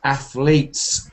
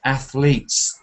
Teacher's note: The T is not sounded, it's kind of athletes. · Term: a kind of stop